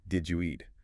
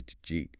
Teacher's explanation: Another classic example is, did you eat? Which often becomes just jeet. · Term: connected